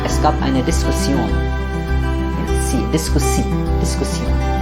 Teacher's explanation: because it's an international word, the stress is towards the end, but there is no Z there. It's not Diskussion.